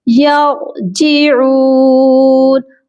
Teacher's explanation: را کو موٹا یعنی پر پڑھا جائے گا، اور جیعون عین کی آواز درمیانی حلق سے آئے گی اور اس کو ہم ایک الف کے برابر لمبا بھی کریں گے کیونکہ عین کے ساتھ واو ہے جو کہ واو مدہ ہے۔